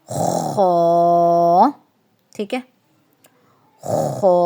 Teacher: خو کے اندر آپ نے یہ یاد رکھنا ہے کہ ہونٹ آپ کے گول نہیں ہونے چاہیے